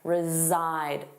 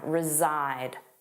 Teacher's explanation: Zzide, the voiced sound, reside.